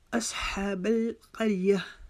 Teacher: हा के लिए हम अपनी हलक के दरमियान से आवाज़ निकालेंगे, 1 अलिफ की मिकदार इसको लंबा करेंगे क्योंकि इस हा के ऊपर खड़ा ज़बर है।